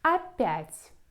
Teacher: Stress on Я, so we pronounce Я, but the first vowel is unstressed like А.